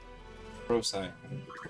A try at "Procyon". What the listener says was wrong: No. It's a K. It's a K. It's Procyon. Unless it's a soft K.